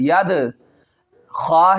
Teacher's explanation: خا ہے حروف مستعلیہ میں سے اس کو پر پڑھنا ہے